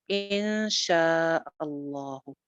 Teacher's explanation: نون ساکن کے بعد آگے وہ لیٹر ہے شین. تو شین جو ہے وہ نہ تو حروف حلقی میں سے ہے نہ یرملون میں سے ہے، لہٰذا یہاں پہ جو ہے وہ اخفا ہو جائے گا